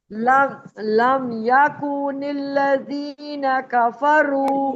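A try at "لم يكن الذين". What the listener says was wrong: یکو کو کھینچے مت. یکن الذین.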